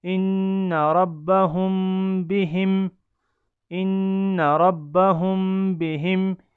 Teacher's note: میم ساکن کے بعد با آیا اور اس کو ہم نے غنہ کے ساتھ اخفا کیا ۔ حمزہ نون زیر ان، نون زبر نا، ان، را با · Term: اخفاء شفوی